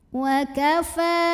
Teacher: karena ada baris fathah panjang pada huruf fa, maka fa panjangkan cukup 2 harokat saja.